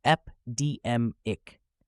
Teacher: Notice how we emphasize deem in the middle.